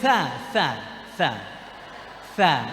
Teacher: ujung lidah dengan ujung gigi seri atas juga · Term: huruf tsa